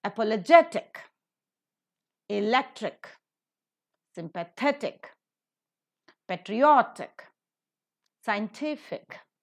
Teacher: So ik will have the syllable before the suffix being accented.